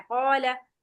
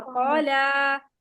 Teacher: कॉला में लाम को जल्दी छोड़ना है। कॉला और कौला ये लंबा है। लेकिन कौला को भी पढ़ते हुए दो हरकत से ज्यादा लंबा नहीं करना।